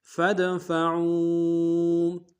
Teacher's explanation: فا کو دال کے سامنے لانا ہے، دال حروف قلقلہ سے قلقلہ کریں گے، عین کو واو کے سامنے لانا ہے، واو مدہ، مدہ کے اوپر مدہ عارض ہے، کم سے کم 2 الف مقدار میں کھینچیں گے۔